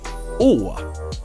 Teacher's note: asks me to pronounce this letter I would say oh and this is the long sound it's not Oh like in English